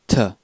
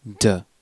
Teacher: the unvoiced alveolarplosive sounds like ta and the voiced alveolar plosive is da